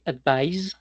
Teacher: verbo termina en sonido que genera vibración, por ejemplo, ad, lo vamos a unificar con otro sonido que también genere vibración para que haya una coherencia.